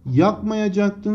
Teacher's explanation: Yakmayacaktın sözcüğüne bakacak olursak, burada da arkadaşlar yine ünsüz benzeşmesi olduğu görülmektedir. Fıstıkçı şahapla biten K sesinden sonra D ekinin sertleşerek T'ye dönüştüğü görülmüştür. Buna da benzeşme adı verilir.